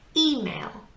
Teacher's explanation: e is our strong syllable